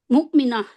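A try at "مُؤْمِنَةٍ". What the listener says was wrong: मुमिना जे आपका हा भी निकलता नहीं है, गायब हो गया है। मुमिना मोटा भी नहीं होगा ना।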